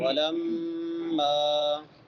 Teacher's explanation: شد والی میم پہ غنہ ہوتا ہے۔ غنے کو ایک الف کے برابر لمبا کرتے ہیں اور غنے کی آواز کو ناک میں چھپا کے ادا کرتے ہیں۔